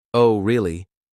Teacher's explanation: if it's said with a flat or falling tone it could indicate skepticism or even sarcasm